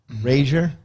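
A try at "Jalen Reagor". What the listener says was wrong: It's it's Ragers with an S.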